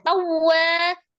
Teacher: Nah, tawwa, waw tasdid dinaberkan ya. Waw tasdid, ya tasdid hukumnya nabar. Jadi ada penekanan. Tawwa, wanya mad, ada alif sebelumnya fathah di huruf waw, wa 2 harokat.